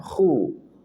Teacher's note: Huruf kha dia punya sifat tafkhim, tebalkan.